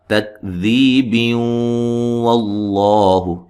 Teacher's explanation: ملانے کی صورت میں یہاں تنوین کا ادغام ہوگا مع الغنہ · لفظ اللہ کو موٹا ادا کریں گے، اس سے پہلے زبر ہے